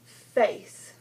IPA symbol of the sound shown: f